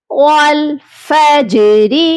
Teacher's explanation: جیم پر قلقلہ کریں گے کیونکہ جیم حروف قلقلہ میں سے ہے